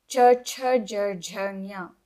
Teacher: these sounds originate from the talu region, which is the hard palate. In Sanskritam, they are called talavyaha. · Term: palatals